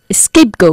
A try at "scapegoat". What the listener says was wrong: No escape, que es escapar, sino scapegoat. Sin E, ¿eh? Scapegoat.